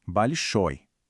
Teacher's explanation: A gente fala ao final com mais força, né? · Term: sílaba tônica